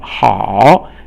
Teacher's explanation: 好 is this third tone, which is going down and then up